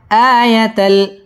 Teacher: আ মদ্দে তবাই একালিফ টান দিয়ে পড়তে হবে